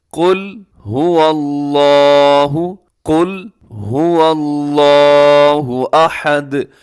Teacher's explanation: لفظ اللہ کو لمبا بھی کرنا ہے، موٹا بھی کرنا ہے۔ لمبا اس لیے کرنا ہے کہ اس کے اوپر کھڑا زبر ہے، موٹا اس لیے کرنا ہے کہ اس سے پہلے زبر ہے۔